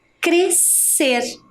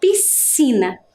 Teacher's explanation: temos duas consoantes que se uniram e formar um único som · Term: dígrafo